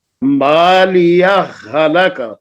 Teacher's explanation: دونوں ہا کو ایک کر دیا ہے، اس لیے دوسری ہا کے اوپر شد آ گئی ہے. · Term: ادغام